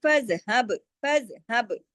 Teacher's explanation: با پہ کلکلا، کیونکہ با جو ہے وہ سکون کی حالت میں